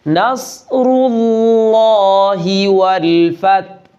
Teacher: صاد کو موٹا ادا کرنا ہے